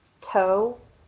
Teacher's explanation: your tongue is behind your teeth and your vocal cords don't vibrate at all